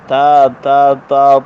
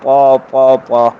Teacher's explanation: ہونٹ گول کرنا، ہلانا اور ادھر ادھر، مطلب اور کوئی تکلف نہیں کرنا ہے. بس جس طرح تا کو سیدھا سادہ پڑھتے ہیں تا ترقیق کے ساتھ. اب طا تفخیم کے ساتھ پر پڑے جاتے ہیں